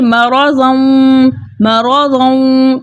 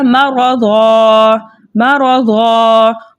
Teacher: مرضم مرضم، ٹھیک ہے، تب قاعدے بدل جائیں گے، لیکن ہم نے یہاں پر وقف کیا تو حالت وقف میں 2 زبر کی تنوین الف مدہ سے بدل گئی اور وقف بن گیا وقف بالابدال، ٹھیک ہے۔